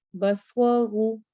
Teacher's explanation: سواد بھی موٹا ہوگا، رو بھی موٹا ہوگا